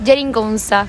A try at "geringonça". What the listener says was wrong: La primera G es je.